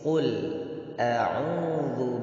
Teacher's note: Qul itu huruf tebal, huruf qaf, sedangkan huruf lamnya itu huruf tipis.